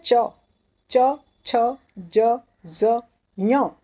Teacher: इसे कहते हैं तालव्य, क्योंकि इन वर्णों का जब हम उच्चार करते हैं तो हमारी जिह्वा हमारे तालु को स्पर्श करती है